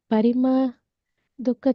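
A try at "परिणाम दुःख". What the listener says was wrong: It's not pariman, it's parinam.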